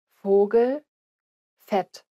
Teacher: The German V isn't pronounced like an English V, but as an F sound. So both V and F in German are pronounced as an F sound.